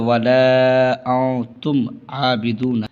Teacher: انتم پہ جو ہے اخفا ہے، نون ساکن کے بعد حروف اخفا کے 15 حرفوں میں سے تا آ رہا ہے